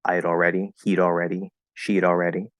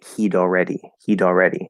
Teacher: you flap the d into had already